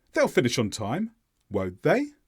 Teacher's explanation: the stresses on the subject pronoun they the intonation went up on they and therefore it's a genuine question I'm not actually sure if